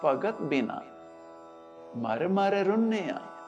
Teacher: ਭਗਤ ਇਕਾਰਾਂਤਕ ਇਸਤਰੀ ਲਿੰਗ ਨਾਮ ਦੇ ਆਖਰੀ ਅੱਖਰ ਤੱਤੇ ਨੂੰ ਸਿਹਾਰੀ ਦਾ ਉਚਾਰਨ ਮੁਕਤੇ ਦੀ ਲਘੂ ਧੁਨੀ ਵਾਲਾ ਹੁੰਦਾ ਹੈ